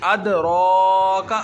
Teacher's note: अदराका। रा को लंबा हमने इसलिए किया क्योंकि इसके ऊपर खड़ा ज़बर है, जिस हरफ के ऊपर खड़ा ज़बर आ जाए उसको एक अलिफ के बराबर लंबा करके पढ़ते हैं।